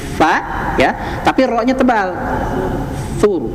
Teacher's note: Fa-nya tipis. Fa ya, tapi ro-nya tebal. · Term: ro tebal